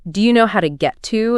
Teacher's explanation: notice how his voice rises slightly at the end of Do you know how to get to? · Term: rising intonation